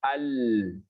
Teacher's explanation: Pada saat dia tertutup keluar udara dari samping, ya, itu namanya lam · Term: inhiraf